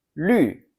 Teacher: It has a sharp falling tone.